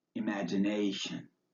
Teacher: the TI in imagination is pronounced like SH